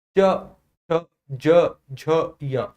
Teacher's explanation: तो महसूस करो कि जो जीभ है ना वो तालु को स्पर्श कर रही है। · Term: चा वर्ग